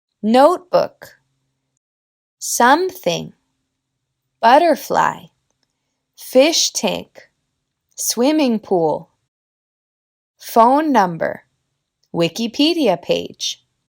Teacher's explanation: en estos componentes la fuerza de voz cae en la primera palabra · cuando se trata de los sustantivos compuestos la primera palabra tiene el estrés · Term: compound nouns